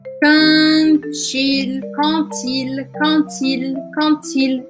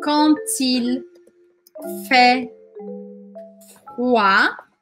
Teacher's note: Então, quando uma palavra termina com consoante e a próxima começa com vogal, eu grudo o som das duas. E aqui, no caso, quando é com D no final, o som vai virar T.